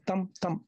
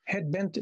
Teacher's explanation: Spondi meaning a foot of two syllables, but both of them stressed.